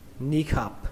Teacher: Các bạn thêm dấu nặng cho nó, khập. Và kết thúc bằng âm P, bắn hơi. Ni khập. Âm I này các bạn hơi kéo nó ra một tí nhé, hơi dài.